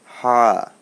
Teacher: হায়ের উচ্চারণটা একটু ডিপ থেকে হবে, গলার মাঝখান থেকে